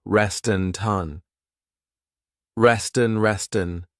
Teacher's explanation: So here you hear that T because I'm linking the 2 words together and I'm transferring the T sound onto the vowel